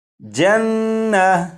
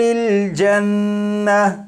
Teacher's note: جب اس لفظ پر وقف کریں گے تو آخر میں جو گول تا ہے اسے ہا ساکن سے بدل دیں گے